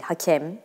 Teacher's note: Hakem mesela E de kapalı.